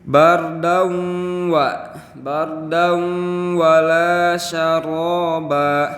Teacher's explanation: Ini kita menemukan tanwin yang bertemu huruf waw, maka cara membacanya itu didengungkan. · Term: idgham bi gunnah